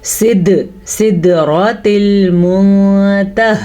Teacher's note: را کو پر پڑھنا ہے کیونکہ را پہ زبر ہے